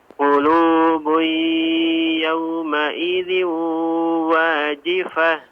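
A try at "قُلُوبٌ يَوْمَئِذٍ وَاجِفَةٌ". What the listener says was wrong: Buiya, ya, diidghamkan dengan digunnahkan. Ya, afwan, untuk idgham bi gunnah ya artinya ada suara juga dari hidung ya, jangan bui saja ya tanpa ada suara hidung.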